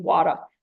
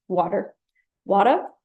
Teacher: So this is a famous New York dialect that tends to drop the pronunciation of R in post-vowel and word final positions. For example, they would drop the pronunciation of the word final R in wada.